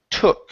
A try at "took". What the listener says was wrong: open your mouth up a little bit.